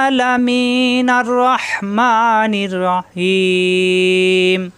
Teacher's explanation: হিম তিন আলিফ টান হবে এখানে ওয়াকফ করলে